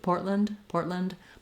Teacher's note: You can hear I do release that D when there's an ND at the end if I'm just saying it by itself. So a little D sound will come out.